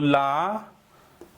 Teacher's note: जीभ के दोनों ओर से वायु निकलती है, पार्श्व भाग से वायु निकलती है, इसलिए यह पार्श्विक।